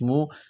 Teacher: واو عین زبر وعلام زبر لا وعلا میم واو پیش مو، واو ساکن سے پہلے پیش ہے، حروف مدہ واو ہے، یہاں پر مد ہے، اس کو کھینچنا ہے